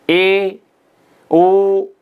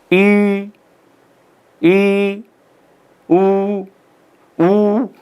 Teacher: और इसमें क्या होता है, जैसे हमने देखा था कि संवृत में जिह्वा जो है, जीभ जो है वो बिल्कुल ऊपर उठ जाती है, लेकिन ए, ओ इनका उच्चारण करते हैं तो जीभ ऊपर तो होती है लेकिन थोड़ा नीचे आ जाती है